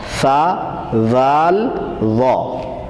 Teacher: جہاں سے ہم نے سا کو پڑھا وہیں سے وا کو پڑھنا ہے، لیکن موٹا کر کے